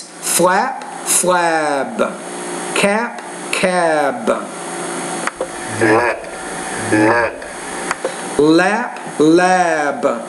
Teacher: when that voice consonantes at the end of the word the vowel sound which precedes it is longer